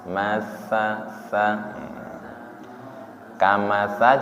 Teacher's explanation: Mataluhum kamalilladuqodaro [Musik] [Musik] i yang di ujung lidah nggih. Tsa ujung lidahnya menyentuh ujung gigi seri atas.